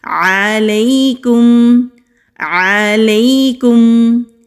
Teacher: یائے لین کو نرمی سے پڑھتے ہیں، کھینچتے نہیں ہیں، نہ ہی سختی سے پڑھتے ہیں · میم ساکن پر اظہار ہوگا، یعنی کہ میم کی آواز کو کلیئر ادا کریں گے